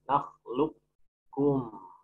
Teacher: Yang kedua, qaf sama kaf, idgham. Nakhluk, masukkan ke kaf, qafnya sudah hilang.